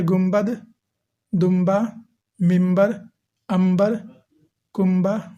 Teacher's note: وہ نون جس کو میم سے بدل کر پڑھا جاتا ہے اسے نون مقلوب کہتے ہیں۔ یہ تب ہوتا ہے جب نون ساکن ہو اور اس کے بعد با آئے۔